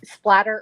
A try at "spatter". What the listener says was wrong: Spatter. No L.